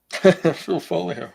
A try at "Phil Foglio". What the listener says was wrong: Yeah, Phil Foglio, meeting Frank Miller. Foglio, I think he has a G in there.